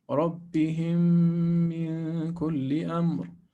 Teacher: since we have a shadda and we have a merging, what we're going to do is to put two harakat. ربهم من كل أمر. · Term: idgham shafawi